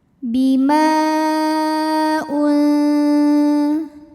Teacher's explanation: maka huruf mim dipanjangkan boleh empat boleh lima harakat Bima [Musik] UN kemudian ada hukum ikhfa ausat karena ada nun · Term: Mad Jaiz munfasil